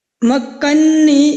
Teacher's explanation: یہاں پہ یاد رکھیے مدغم متحرک ہے، اس کو ساکن کر کے ہم مدغم فی میں داخل کر رہے ہیں، مکنی۔ اس میں اب جو نون متحرک ہے اس کو ہم نے ساکن کیا اور ساتھ ہی تشدید لگا کر مکنی اس طرح بن جائے گا اور یہ مدغم فی میں داخل ہو گیا۔